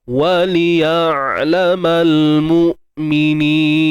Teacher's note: Baik, mal ni alif lam qamariyah ALQ. Matikan hamzah dengan selesaikan sifat syiddahnya. Tahan suara tu.